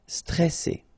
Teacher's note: here you get this E before the double S, so it will open the pronunciation of the E.